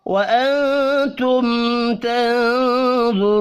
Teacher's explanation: دو نون ساکن ہیں، دونوں کے بعد حروف اخفاء میں سے ایک حرف آ رہا ہے تو دونوں پر اخفاء حقیقی ہوگا. میم ساکن کے بعد تا ہے، یہاں پر اظہار شفی ہوگا، غنہ نہیں ہوگا.